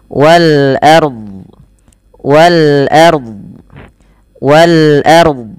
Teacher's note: ro-nya dibaca dengan tebal karena ro sukun didahului dengan fathah